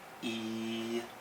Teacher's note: First tone is high and long.